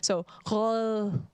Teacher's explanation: you had to pronounce it with sticking your tongue out to have like a L sound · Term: soft D